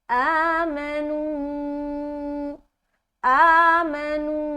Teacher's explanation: آ کو کھینچا الف مدہ کے برابر. نون کو ہم 3 سے 5 الف کے درمیان کھینچیں گے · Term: مد منفصل